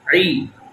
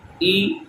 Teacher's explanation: عین کی جو آواز ہے وہ آپ نے گلے کے درمیان سے نکال لی اور حمزہ کی آواز نیچے سے